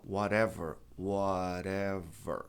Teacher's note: T ladeado por vogal. A tônica está no O.